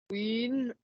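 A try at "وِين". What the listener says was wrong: Voilà, ça, allongé, hein. Juste win, win directement.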